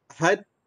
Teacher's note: Lepas daripada ni baru qalqalah. Huruf dal tu mati. Selepas daripada matinya huruf dal, kelahirlah suara qalqalah. So kita matikan dulu.